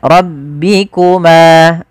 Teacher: Pada lafal ma ada mad thabi'i, yaitu panjangnya dua harakat